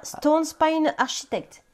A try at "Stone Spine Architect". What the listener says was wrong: en anglais, on ne prononce pas le chi.